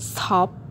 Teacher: when we pronounced in the word stop there is no puff of air and we tend to pronounce it in a week away and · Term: unaspirated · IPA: /stɑːp/